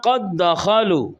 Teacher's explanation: दाल का दाल में इदगाम हुआ है